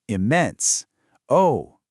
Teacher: for a rise-fall sounding impressed or surprised